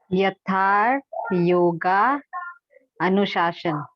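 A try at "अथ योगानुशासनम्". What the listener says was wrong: बहुत सुंदर, यथा नहीं, अथा। अथ योगानु, योगानुशासन, योगानु अनुशासनम नहीं, योगानुशासनम। शासनम। फिर से, अथ अथ, योग का अनुशासन तो हुआ योगानुशासन, अथ योगानुशासन।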